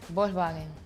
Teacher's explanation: the K and S is kind of missing